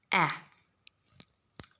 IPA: æ